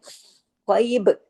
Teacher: अब जब हम बा पे रुकेंगे तो कलकला होगा